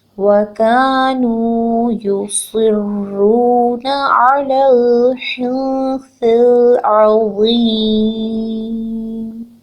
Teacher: صاد کے نیچے زیر ہے، صاد کو پر پڑھنا ہے کیونکہ ہیوی لیٹر ہے. اور را مشدد کے ساتھ ملا کے پڑھنا ہے. · یا کے اوپر ایک حرکت ہے، پیش ہے، اس کو ہم نے جلدی پڑھنا ہے، لمبا نہیں کرنا